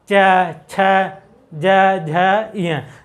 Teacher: जब भी बोलेंगे तो हमारी जो जीवा है वह जाके कहाँ पे टच करेगी, तालु पे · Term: च वर्ग